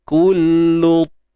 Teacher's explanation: Huruf ta ni kan bersifat itbaq. Terangkat sebahagian besar lidah kita ni ke langit.